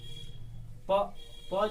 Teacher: प जब बोल रहे हैं तो हमारा दोनों ओठ आपस में सट रहे हैं